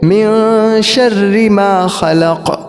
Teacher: اس کے اندر قوف جو ہے اس کو پور کریں گے